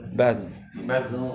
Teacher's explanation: Jangan ke sin, jangan ke s, tapi ke za.